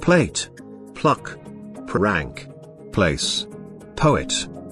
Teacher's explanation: The p sound is a voiceless bilabial plosive consonant sound. This consonant is usually voiceless at the initial positions of words, but is said to be voiced in other instances where it becomes strongly produced due to the extra puff of air in its articulation, aspiration.